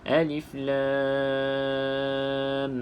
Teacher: cukupkan dengan kadar enam harakat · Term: mad lazim Harfi